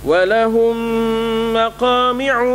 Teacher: Mim mati berjumpa dengan mim, ya. Ada dengungnya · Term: Mim jumpa mim